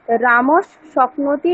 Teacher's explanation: বিসর্গের জায়গায় পরবর্তী বর্ণটি বসে যাবে অর্থাৎ বিসর্গটি পরবর্তী বর্ণে কনভার্ট হয়ে যাবে যেমন রামহ স্বপ্নতি এখানে বিসর্গের পরে তালব্যস আছে তাহলে এই নিয়ম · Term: সন্ধি